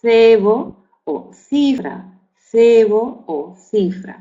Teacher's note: otro fricativo interdental sordo ante las vocales E, I, que sería Z